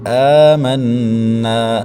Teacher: حمزہ کے اوپر کھڑی حرکت میں کھڑی زبر ہے تو اس کو 1 سے 1.5 الف تک کھینچیں گے۔ آمنا، نون مشدد کا غنہ ہے، وہ یہاں پر غنہ کریں گے، نون کے بعد الف مدہ ہے، 1 الف تک کھینچیں گے۔